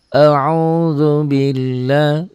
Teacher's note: Tetapi kalau sebelum lafaz Allah berbaris di bawah, ini berbunyi A, ya tipis.